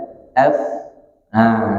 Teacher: itu makhrajnya ujung gigi seri atas kita bertemu dengan perut bibir bawah. Jadi nyebut fa bukan pakai ditiup, bukan begitu, tapi fa. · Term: makhraj fa